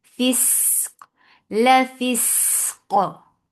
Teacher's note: qaf will get sifa of qalqala because this is with sakun now. And qaf will be heavy.